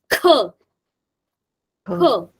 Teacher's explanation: when we pronounce this aspirated kiok, we'll be putting more stress into it